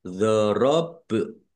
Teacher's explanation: Ba sukun bacaan qalqalah dibaca memantul ditampakkan pantulannya. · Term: kolkolah